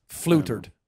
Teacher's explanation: the te in Irish accent is an sh sound